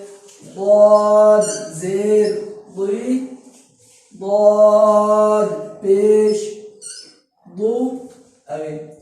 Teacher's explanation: ضاد حروف مصطلح میں سے یہ بھی ہمیشہ پر پڑ جائے گا